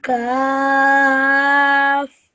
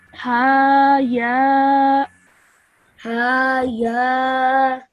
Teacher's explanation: this ha and ya should only be said for 2 seconds each.